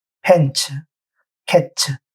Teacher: 무성음 중에 T와 S가 만나면 츠로 발음합니다. 펜츠, 캐츠, TS로 끝나잖아요.